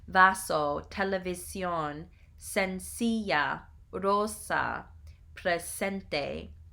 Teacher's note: The S always has the S sound of the word saint. It never has the Z sound of the English word rosy.